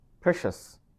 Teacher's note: And when you pronounce, you have to stress the first syllable